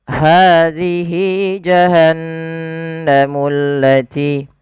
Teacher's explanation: Nah, apabila ada ha dhamir setelahnya bentuk seperti ini kita namakan dengan mad silah qasirah. Panjangnya adalah 2 harokat sebagaimana mad tabi'i.